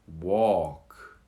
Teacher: The L, you almost swallow the L.